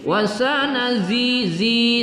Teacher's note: kita baca Zi agak kuat berdesis